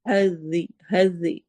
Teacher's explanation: ذا نرمی سے، رو موٹا پڑھا جائے گا